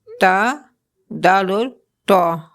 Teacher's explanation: مخرج نمبر 12 زبان کی نوک اور اوپر سامنے والی 2 دانت۔ جب زبان کی نوک اوپر کے سامنے والے 2 دانتوں کی جڑ سے لگے، اس مخرج سے 3 حروف ادا ہوتے ہیں، تا، دال اور تو۔